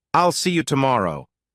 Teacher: Notice how there's a tiny pause after I'll and see you. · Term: pausing